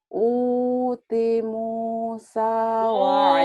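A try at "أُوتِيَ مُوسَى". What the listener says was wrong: Utia, bukan uti. Utia ada barisnya. Yang panjangnya u sama mu sama sa sama i sama sa. Ini panjang.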